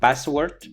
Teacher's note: they drop the aspiration, so they say password. But the more interesting thing that happened is that instead of sa, they pronounce it za, so they say password.